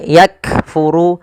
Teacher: Cara membacanya yaitu bacaan syiddahnya dulu, yaitu kaf itu ditahan suaranya ak, baru dikasih hamas. Hamas itu mengalirnya nafas, maka yakfuru, nah seperti itu. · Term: syiddah dan sifat hamas